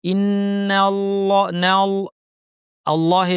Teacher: ইসমুহ আলাললা থামলে না বলে থামব ইনজ লম্বা গুনা ই শক্ত ইন্নাল্লাহ আল্লাহ লামটা ভারী হবে কারণ আগে জবর আছে